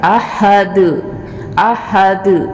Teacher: قلقلہ کیا جائے گا. احد احد، دال کو تھوڑا ہلا کے پڑھیں گے